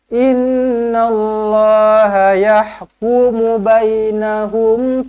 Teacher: Bismillah. Innallah, nun sabdu wajibul gunnah, dengungkan 2 harakat